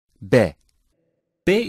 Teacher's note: Hamza Hamza is pronounced weaker like in bed back BAE is pronounced by closing both lips it is a weak consonant and articulated by pressing on the B sound like in bed